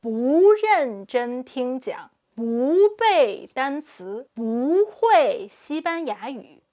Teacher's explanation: when the word no or not, i.e. 'bu' is followed by another character with a fourth tone, it becomes a second tone.